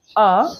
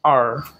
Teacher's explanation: ব্রিটিশরা বলে আ আর আমেরিকানরা বলে আর